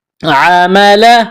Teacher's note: گلے کے درمیان سے زور لگا کر عین کو نکالنا ہے. عمل عامل الف مدہ ہے، ایک الف کے برابر کھینچنا ہے.